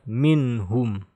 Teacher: Nun sukun bertemu ha di sebelahnya. Ini adalah izhar ya. Maka harus dibaca jelas. Tidak boleh berubah.